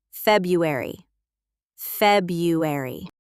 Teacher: Most people drop that first R.